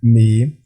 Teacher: मीम, दोनों होंठों के खुश्क हिस्से मिलाने से, ये भी एक ही अकेला हर्फ है तो इसको भी हम अकेला ही अदा करते हैं, मीम।